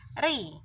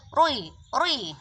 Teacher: ketika ro itu dibaca tarkik atau ro itu berharokat kasroh, ri, maka dia akan agak maju ke depan, menempati hurufnya lam. Ri, nggak mungkin dibaca rui. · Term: ro ketika ditarkik